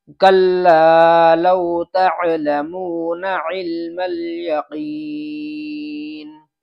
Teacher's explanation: تعلمون کے یہ جو نون ہے اس نون کو کھینچ دیتے ہیں، تو یہ کھینچنا نہیں چاہیے، بلکہ نون کو حرکت کی طرح پڑھنا ہے، بالکل بغیر کھینچے، ذرا سا بھی نہیں کھینچنا چاہیے۔